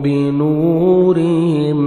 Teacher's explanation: ذہب اللہ بنورہم، واو مدہ، نون کو 1 سیکنڈ کھینچیں گے، را کے نیچے زیر ہے، را کو باریک کر کے پڑھیں گے، میم ساکن کا اظہار ہے، جلدی پڑھیں گے۔